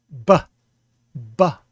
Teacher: With the ba, you pronounce it with your lips bursting open, ba, ba. And with the fricative, you pronounce it with your bottom lip up against your teeth, va, va. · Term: plosive sound